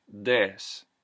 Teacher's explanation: the voice TH, would become a D